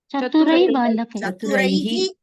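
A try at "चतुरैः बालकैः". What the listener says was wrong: Visarga has to come in pronunciation. Chaturaihi Balikaihi.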